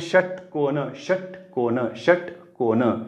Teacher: जिभेचा शेंडा आहे ना त्या मूर्धन्याच्या दिशेने निघालाय पण त्या दोघांमध्ये पोकळी निर्माण झाली त्या पोकळीतून हवा घर्षण करत जाते म्हणून यांना आपण घर्षक म्हटलेलं आहे श च्या वेळेस पण तसंच · श म्हणताना लगेच ट म्हणा लागतं